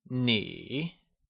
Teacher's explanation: it is pronounced using a falling rising tone, also known as the third tone